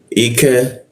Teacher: lidahnya diturunkan ka ada hembusan udara